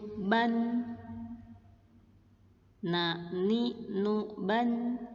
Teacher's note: ujung lidah ketemu gusi gigi seri atas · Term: makhraj huruf nun